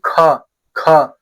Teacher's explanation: ख बोल रहे तो मुंह से ज्यादा हवा निकल रही है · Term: महाप्राण